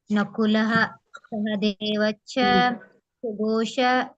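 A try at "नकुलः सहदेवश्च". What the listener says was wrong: ನಕುಲಹ ಅನ್ನಂಗಿಲ್ಲ ಮಾತಾಜಿ ಪೂರ್ಣಹ ಬರೋದಿಲ್ಲ ಅಲ್ಲಿ ನಕುಲ ಸಹದೇವ ಸ್ವಲ್ಪ ಹ ಕೇಳಿಸಬೇಕು ಅಷ್ಟೇ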